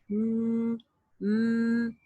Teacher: letters it's a sound of two letters mean and new okay it sound made by entirely by the nose with the nasal passage